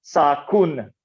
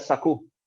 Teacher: in pronunciation that final n is so weak that it is often dropped